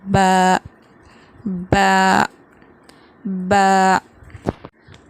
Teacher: با دونوں ہونٹوں کے گیلے حصے سے ادا ہوتا ہے، مطلب ہمارے جو ہونٹ ہیں ان کے جو اندر کا حصہ ہے جو ہمیشہ گیلا رہتا ہے، اوپر کا ہونٹ اور نیچے کا ہونٹ مل کر ادا ہوتا ہے با۔